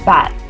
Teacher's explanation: the sound b as in bad feel your throat it vibrates